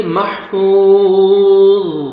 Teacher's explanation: ضا ساکن ہو جائے گا اور ضا کو موٹا کر کے پڑھیں گے